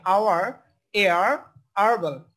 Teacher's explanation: আমরা কিন্তু হার্বাল যদিও বলি এটাকে, এটার এইচ এর উচ্চারণ কিন্তু এটা আসে না